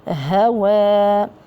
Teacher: المد طبيعي حركتان. الواو طبعا مرققة لذلك جاءت ألف المد مرققة